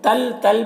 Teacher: तल में इदगाम ताम हो रहा है, तनवीन को लाम से मिलाकर बगैर गुन्ना के पढ़ेंगे